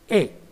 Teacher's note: A is a front unrounded vowel between half close and half open position